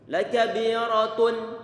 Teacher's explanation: tanwin dibaca dengan jelas, bisa kita baca dengan jelas kalau ujung lidah ditempelkan ke makhrajnya huruf nun. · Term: izhar